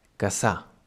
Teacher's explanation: Then we may find two S's between vowels, between two vowels, just like we just saw with the R before. In this case, it sounds like a normal S, but, well, maybe a bit longer.